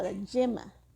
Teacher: no hacemos la diferencia fonética entre la Y y la L. Y eso se llama yeísmo.